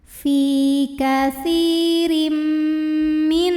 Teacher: Karena ada tanwin kasrah yang menghadapi huruf mim, maka bunyi tanwinnya dimasukkan ke mim. Katsirim masuk ke mim disertai bunyi dengung. Jadi di sini yang ditahan adalah bunyi m-nya. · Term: idgham bhunah, idgham bi gunnah